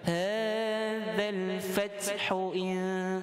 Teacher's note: Bila bertemu huruf ni sukun, dia ada sedikit udara yang keluar. Bukan kita buat-buat, dia naturally akan keluar. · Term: Hams